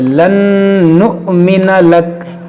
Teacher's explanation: हमज़ा साकिना है, इसको हम झटका देकर पढ़ेंगे